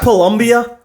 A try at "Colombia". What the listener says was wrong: Colombia. It's Colombia, not Columbia.